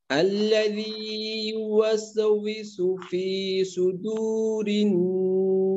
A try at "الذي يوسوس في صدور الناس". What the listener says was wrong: হ্যাঁ, ওই সিনের উচ্চারণটা কিন্তু একটু ওয়াস এমনটা হয়ে গেল, এখানে আর একটু হালকা ভাবে ওয়াস উইসু, ওয়াস উইসু, আল্লাযী ইউওয়াসউইসু।